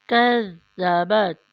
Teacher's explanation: تا پہ زبان کو روکیں، چھوڑنا نہیں ہے، اگر چھوڑ دیا تو پھر وہ تو بن جائے گا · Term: تا ساکن